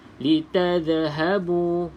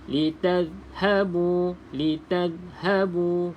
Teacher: pastikan huruf Za ni tidak ada lantunan sebab huruf Za bukan Qalqalah